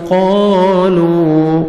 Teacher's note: الف مدہ 1 سیکنڈ آپ نے قاف کو کھینچنا ہے